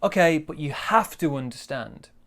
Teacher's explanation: very big stress on have to